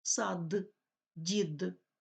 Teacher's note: в українській мові не оглушується дзвінкі приголосні в кінці слів